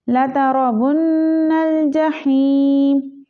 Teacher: नून मुशद्दद है तो नून पे हम गुन्ना करेंगे